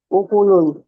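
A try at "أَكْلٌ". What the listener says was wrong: आकलून ऊक नहीं है।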